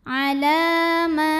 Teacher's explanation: La mad tabi'i muqaddar karena ada baris fathah tegak di atas huruf lam. Maka cara bacanya lam panjang 2 harokat.